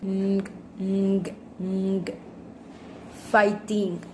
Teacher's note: With manner of articulation, nasal, and place of articulation, velar.